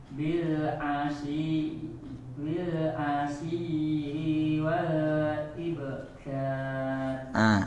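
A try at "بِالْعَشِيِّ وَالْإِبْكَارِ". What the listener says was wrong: I-nya tadi panjang, diulang. Asyi wal. Shin-nya nanti tebalkan lagi ya.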